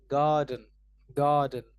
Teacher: The stress is placed on GAR so we say garden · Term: word stress